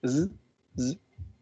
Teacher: it's fricative, voiced, and alveolar sound